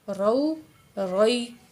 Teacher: را کے اوپر زبر ہے تو را کو ہم موٹا کر کے پڑھیں گے۔ را وا زبر رو، را یا زبر روئی، رو روئی۔